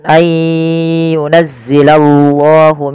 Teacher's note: tebalkan lafal Allah karena di situ lamnya lam tafhim